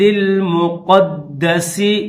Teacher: ربہ بالواد المقدس، قاف کو دال کے ساتھ ملائیں گے، دال مشدد ہے تو دال کو سختی کے ساتھ پڑھیں گے